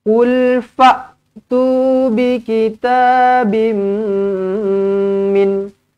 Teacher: Rapatkan bibir jumpa dengan mim sabdu. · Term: idgham ma'al gunnah